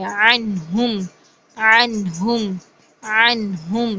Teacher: नून को हम जाहिर करेंगे, इसकी साउंड को प्रोमिनेट करेंगे